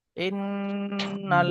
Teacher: নুনের উপর তাসদিদ এসছে, ওয়াজিব গুন্না, একালি পরিমাণ গুন্না করে পড়তে হবে।